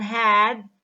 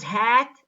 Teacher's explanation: the vowel in the word had is pronounced with more length than the vowel a in the word hat